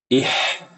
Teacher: huruf H itu dia fokusnya di tengah tenggorokan. Enggak ada kaitannya dengan pangkal lidah.